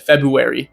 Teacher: Wary. Like, you will hear it like with the r being a w instead, February. I've heard that all the time.